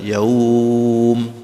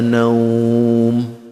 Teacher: Nah, itu kelihatan tuh kalau di wakaf tuh madnya kelihatan. Mad layin ini cukup dua harokat, hurufnya cuma dua, wawu dengan iya.